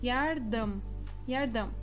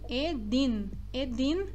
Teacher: Yardım, edin, edin, novamente este N não é edin, edin é errado, não está certo, é edin, edin na ponta da língua. Então o M é juntando os lábios e o N é na ponta da língua, como se ali tivesse uma continuação, né?